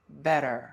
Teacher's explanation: So in British English this word is pronounced as better but in American English it is better. So the T is somehow pronounced as D and the R is pronounced